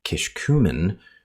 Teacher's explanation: kishkumen with a shifted stress onto the second syllable